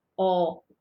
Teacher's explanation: quando a gente tem aqui acento agudo, o som da letra O vai ficar aberto. Não vai ficar O, vai ficar O, som aberto, porque a gente coloca aqui no dominó o acento agudo, tá?